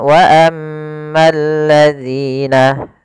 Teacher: Alif lam syamsiyah yaitu alif lam yang ditulis tapi tidak dibaca lamnya